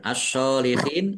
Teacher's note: alif lam syamsiyah karena tidak dibaca langsung masuk ke huruf berikutnya yaitu shad ditandai shadnya ada tasdidnya shnya dibaca dobel kemudian shad fathah berdiri · karena bertemu dengan huruf terakhir yang dibaca sukun karena waqaf maka menjadi mad arid lisukun dibaca panjang boleh enam boleh empat boleh dua harakat